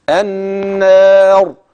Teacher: الراء بقى في كلمه النار هتفخم عند الوقف النار هنا بقى ممكن تمد حركتين او اربعه او سته خلاص